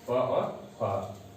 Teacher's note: प और फ, यह ओष्ठ से उच्चरित होते हैं और इनको ओष्ठ वर्ण कहा जाता है